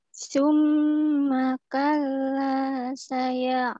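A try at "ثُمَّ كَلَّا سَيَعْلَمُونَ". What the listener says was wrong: Ya, bagus.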